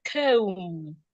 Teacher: For example, if I have the word comb, the B in that word is not sounding B. Instead, it is silent. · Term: silent letters